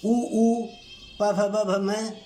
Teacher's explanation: उ में गोलाकार होते हैं और प, फ, ब, भ में आपस में मिलते हैं। जब ये मिलते हैं तो श्वास वायु जो अंदर से बाहर निकल रही है उसमें रुकावट उत्पन्न होती है। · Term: ओष्ठ